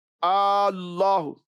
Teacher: کسی نے اس میں جلالت کے الف کو لمبا کر دیا